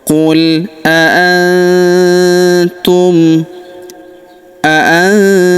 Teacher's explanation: huruf nun sukun bertemu huruf tu maka nun sukunnya melebur ke huruf tu. Kita baca dengung dan samar. Dengungnya kita tahan dua sampai harakat.